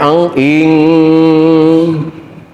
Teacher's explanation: Nun mati pertama ketemu kaf, ihfa ba'd, suaranya ang ing.